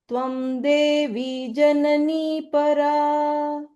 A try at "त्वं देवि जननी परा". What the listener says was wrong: The first time was closer. Second time again, it was a little more like a dirgha. त्वमेव सन्ध्या सावित्री त्वं देवि जननी परा.